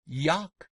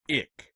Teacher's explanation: the compound base undergoes vowel gradation, we've talked about that before, and becomes less colorful, dropping from yak to ik